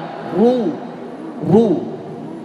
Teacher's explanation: Ru tebal ya, monyong. Setiap dhammah dimonyongkan.